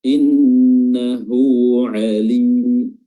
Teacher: di sini ada huruf lam mad tabi'i 2 harokat